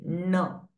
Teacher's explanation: So when you say न, nasal passage and oral both are open. You can feel it in both the cavities, oral and nasal cavity. N. It is oronasal sound.